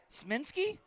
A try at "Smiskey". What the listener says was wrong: There's no N in there. Smiskey? Smiskey.